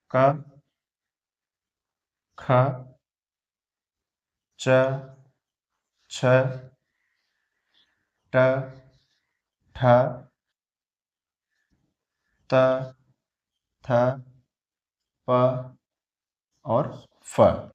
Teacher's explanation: स्वर तंत्रियों में कंपन होता है, नहीं नहीं, कम स्वर तंत्रियों में कंपन नहीं होता है दोस्तों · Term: अघोष ध्वनियां